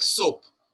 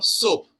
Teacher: the dental s where the tip of the tongue touches the teeth